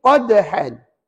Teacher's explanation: nak sebut Dal Tu kan guna hujung lidah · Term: Qalqalah Sugra